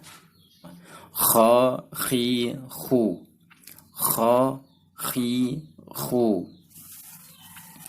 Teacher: Makhraj huruf kha yaitu dia adalah tempatnya tenggorokan bagian atas. Jadi ketika kita mengucapkan huruf kha, dia terasa.